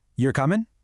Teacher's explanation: Did you hear my voice go up at the end there? That rising tune, that little upward arrow is what instantly flips a statement into a question.